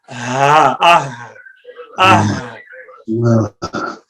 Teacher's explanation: आप यहाँ पर हाथ रखें, जरा हाथ रखें और बोलिए हा सारे बोलिए ये है अक्सा हलक। हलक का वो हिस्सा जो सीने से मिला हुआ है, इससे 2 हरूफ निकलते हैं और वो हैं हमजा और हा